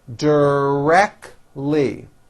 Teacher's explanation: three syllables and most americans drop the t directly she is directly responsible exactly three syllables egg zach lee · 3 syllables, and most Americans drop the T.